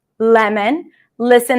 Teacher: when the L appears before a vowel, it is lighter